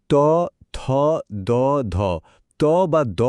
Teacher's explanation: ত বা দ বলার সময় কিন্তু ঠিক এটাই হয় জীবটা গিয়ে দাঁতের ঠিক পেছনে আলতো করে লাগে। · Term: দন্ত ব্যঞ্জন